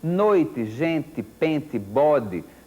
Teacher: tudo que termina com o som de I, mas que não é pronunciado de forma forte no final, não é tônico, para usar um termo gramatical que não precisa ser obrigatório para as crianças, tá certo?